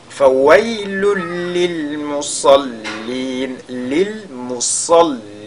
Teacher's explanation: On fait donc idgham bi ghayri ghunna ou bien idgham bila ghunna. Il faudra donc qu'il y ait une fusion totale du tanwin dans la lettre lam qui suit